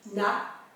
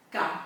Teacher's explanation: On sent que le N, c'est plus comme un L. La langue vient taper sur le devant du palais dur, alors que le K, K, K, les deux largeurs de la langue viennent sur les côtés du palais dur et viennent prendre appui.